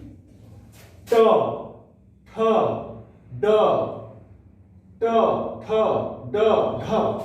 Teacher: तनिकुन जीभ जो है से ऊपर सटत है, जेके हमरे मन मूर्धा कहिला।